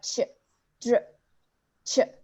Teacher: This is due to an assimilation of the consonant D and R on the alveolar ridge, since it is produced at the same place. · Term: affricate